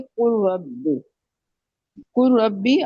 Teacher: लाम की कोई भी सिफ्त जो होगी वो बाकी नहीं रहेगी, हमने डायरेक्ट काफ को रा के साथ मिला देना है। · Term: इदगाम ताम